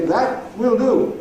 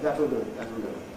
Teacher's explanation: In the middle of the rhythm unit, “That’ll /ˈðætl/ do” is the only way to say it.